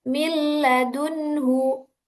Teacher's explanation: Ketika nun sukun bertemu dengan lam millunhu. Di situ nun ketemu lam tidak dibaca dengung. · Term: idgham bila ghunah, idgham bila gunnah